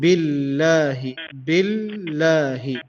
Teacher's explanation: take more time on the lam, which is billahi, because of the shadda.